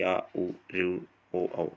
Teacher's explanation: जिन स्वरों के उच्चारण में जीभ का पिछला भाग काम करता है उन्हें पच्च स्वर कहते हैं, जैसे कि आ, उ, ऋ, ओ, औ।